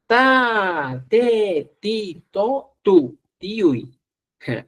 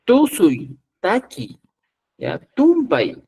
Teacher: para producir este sonido, el ápice, la punta de la lengua debe orientarse hacia la cara interna de los incisivos superiores.